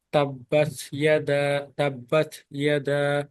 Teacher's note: আচ্ছা, তো এখানে তাব্বাত, এই জায়গায় তায়ের একটা সিফত আছে যে আমরা যখন তাব্বাত পড়ি এইভাবে না পড়ে, যে তাব্বাত ইয়াদা এভাবে না পড়ে, হালকা বাতাস বের হবে, লাইক তাব্বাত ইয়াদা, তাব্বাত ইয়াদা, কলকলা না কিন্তু হালকা বাতাস বের হবে